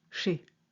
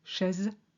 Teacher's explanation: the EZ is always the same E of café, but chaise is E of Calais with a Z on the end